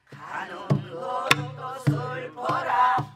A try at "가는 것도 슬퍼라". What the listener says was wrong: 굿굿굿.